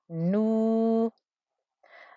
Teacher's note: We have a noon with a dhamma and a wow. This is a 2-count stretch.